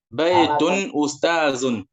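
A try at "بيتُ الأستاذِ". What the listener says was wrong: Baitul. Nampak L-nya, L ma'rifahnya.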